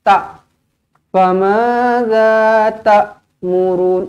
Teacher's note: Famadza ta'murun, ini adalah huruf hamzah. Jadi jangan dekat sini kita tukar menjadi huruf ain. Jangan sampai kita baca famadza ta'murun, ta.